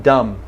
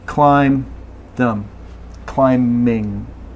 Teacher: Okay, M is the end of the word, climb, and also in dumb. Okay, so just no B in those words.